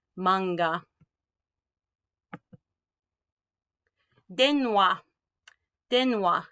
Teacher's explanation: N is considered to be a whole syllable in and of itself.